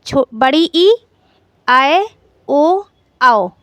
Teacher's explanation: जिन स्वरों के उच्चारण में मांसपेशियों में अधिक तनाव रहता है उन्हें दृढ़ स्वर कहते हैं।